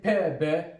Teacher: when I say P, B, so the lips here are in contact with each other. The lips are in contact with each other. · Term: bilabial